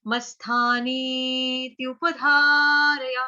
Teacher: दीर्घ स्वर होने की वजह से हमारा त का आघात प्रॉपर सुनाई नहीं देगा